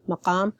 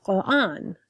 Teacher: I tend to keep the qa sound, because the Iraqi dialect keeps the pharyngeal sounds and is heavy in that sense. So, just like the word Quran, so I emphasize the qa.